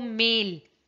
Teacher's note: और अगर मैं डिपथोंग देखूं, ये देखो मेल ए आई दोनों की इकट्ठे साउंड आ रही है, कंबाइंड वॉवल साउंड है, इसमें टू वॉवल्स है, दैट इज डिपथोंग। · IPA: [ai]